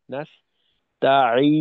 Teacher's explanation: যেমন ধরেন এইখানে নাস্তাইন এই শব্দের ভিতর প্রথমে নুন, এই নুনটা নাকে যাবে, জি আর শেষে গিয়ে আরেকটা নুন, দুই মাথার দুই নুনে আওয়াজ নাকে যাবে। মাঝে সিন তা আইন ইয়া, নাস্তাইন, এই পর্যন্ত নাকে যাওয়ার কোনো সুযোগ নেই